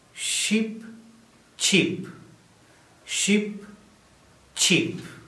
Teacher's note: You should be able to feel the moving of the tongue tip towards the alveolar ridge when you say cheap. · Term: ch sound